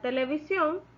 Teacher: la sílaba tónica es ción porque es ahí donde recae la mayor fuerza del voz al momento de pronunciar